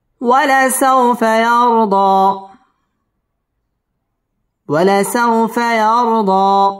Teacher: জবরের বাম পাশে জজম ওয়ালা ওয়াও লিনের হরফ তাড়াতাড়ি পড়তে হবে